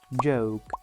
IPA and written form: ʤəʊk (joke)